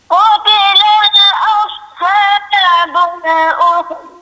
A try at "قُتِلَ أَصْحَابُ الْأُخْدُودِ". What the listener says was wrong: Qutila aus. Tadi dengar macam qutilal, dia qutila aus la saja.